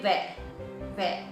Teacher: जब व बोलेंगे तो हमारे होठ जो है दांतों को टच कर देंगे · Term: दंत ओष्ठ